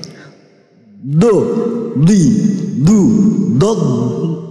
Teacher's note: sisi kanan kiri lidah mengenai sisi gigi geraham atas sebelah dalam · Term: huruf dot